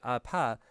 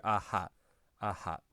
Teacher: p kind of got changed into h over time because people opened their mouth and didn't close their lips